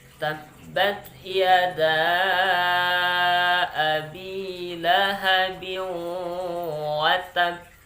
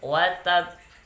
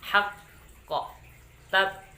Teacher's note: bila huruf qalqalah itu ada tasdidnya ketika kita waqaf atau berhenti, maka ditahan dulu sebagai penanda tasdidnya